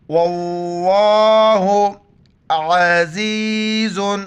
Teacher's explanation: لفظ اللہ سے پہلے واو پر زبر ہے، لفظ اللہ کو موٹا پڑھیں گے. واللہ عزیز، عین کو گلے سے کرنا ہے اور زا کو یا کے ساتھ ملائیں گے.